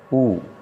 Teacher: औष्ठ है। ऊ, क्योंकि जब हम ऊ बोलते हैं तो दोनों औष्ठ हैं जो वो गोल हो जाते हैं